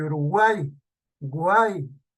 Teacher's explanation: vocal cerrada la U, vocal abierta la A, tónica, y la vocal cerrada I. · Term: triptongo